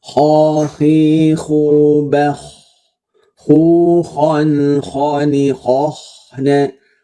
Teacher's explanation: Dia fokus ke lidahnya diangkat, pangkal lidahnya. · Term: huruf yang tebal